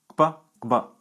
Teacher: They have a double articulation at the lips and at the back of the roof of the mouth. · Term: velar labial stops